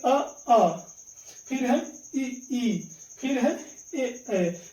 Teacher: इनका उच्चारण कर रहे हैं तो यहां पे ओठ जो है दोस्तों गोल नहीं हो रहा है ए ध्यान रखेंगे इसीलिए ये कहलाते हैं अवृत्त मुखी स्वर अब